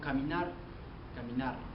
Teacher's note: predomina lo que es la letra R, y esta es pronunciada con más fuerza y se alarga un poco. Por ejemplo, caminar, caminar, lo alarga un poco más la R.